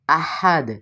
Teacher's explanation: احد اس کو یہاں پہ جو ہا آ رہا ہے اس کو حلق کے وسط سے ادا کریں گے